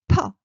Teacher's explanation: burst of air, rising